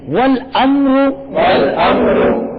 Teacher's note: میم ساکن ہے نا تو میم میں قلقلہ نہیں ہوگا